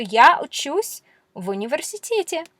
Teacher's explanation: Notice how the v just sort of gets blended into this next word.